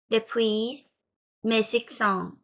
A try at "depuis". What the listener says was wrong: Je ne vais pas prononcer le S final. Je ne prononce pas le S. Pas de S. C'est juste depuis.